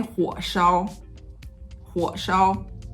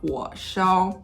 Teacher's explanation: But when I put 烧after a low tone, for example, 火, if I say 火烧, 火烧, so 火 is a half tone 3 and it ends very low. So 烧 is going to be assimilated to the end of that.